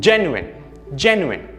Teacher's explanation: Notice how gen is stressed, but the other 2 syllables sort of fade into the background.